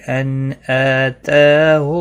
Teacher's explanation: نون ساکن کے بعد حمزہ ہے، اظہار حلقی ہوگا، گنہ نہیں کریں گے۔ حمزہ، تا اور اللہ کے لام کے اوپر کھڑی زبر ہے، تینوں کو ایک ایک الف کے برابر کھینچ کر پڑھنا ہے۔